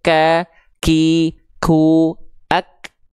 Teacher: Tertunaikan dulu sifat syiddahnya, ak, baru keluar percikan nafasnya, ak, nggak langsung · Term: huruf kaf